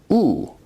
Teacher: oo is a high, back, rounded vowel.